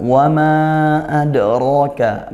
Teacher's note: Adroka ad qalqalah sugro dal sukun ya. Nah karena ada lima huruf qalqalah salah satunya dal. · mad jaiz munfasil dibaca panjang dua alif atau empat harakat karena mad bertemu huruf hamzah lain kalimat ya